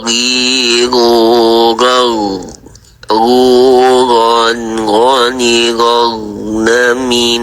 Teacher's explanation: Ghain ini berada di tenggorokan, ujung tenggorokan atau daerah pangkal lidah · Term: huruf gha